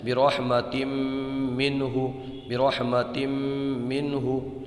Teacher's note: یہ بھی لفظ جو ہے نا یہ بار بار آیا، برحمتم منہ، برحمتم منہ، تو یہاں پر آپ غور کریں، یہ دیکھیں آپ، یہ دیکھیے تا پر دو زیر کی تنوین ہے اور اس کے بعد میں یہ میم آیا ہے، تو یہاں پر بھی ادغام ہوگا، گنہ کر کے پڑھیں گے